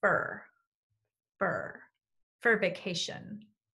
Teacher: In American English, we tend to reduce for to sound like fur, fur, for vacation.